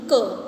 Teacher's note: गले में जीभ की जड़ से उत्पन्न ध्वनि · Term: जिह्वामूलीय